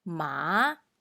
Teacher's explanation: when the car starts to climb the hill we call it tone 2 or say rising tone